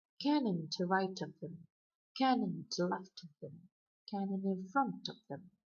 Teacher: You've got the dactyl foot used, where the first syllable is stressed, followed by two unstressed syllables, and you've got two accents. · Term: dactylic dimeter